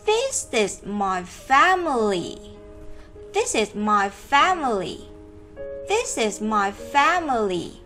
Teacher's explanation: Và từ this cũng là một từ phải nhấn mạnh trong câu. Còn những từ còn lại thì nó sẽ đi xuống một chút các em nhé.